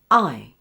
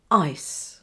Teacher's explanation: I is known as a closing diphthong because for the final I sound, the mouth closes. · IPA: /aɪ/